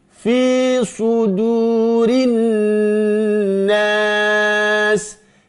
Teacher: nun bertasydid gunna ditahan dulu